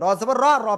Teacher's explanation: র অক্ষর এর উপরে যখন জবর বা পেশ হবে, র অক্ষর মোটা আওয়াজে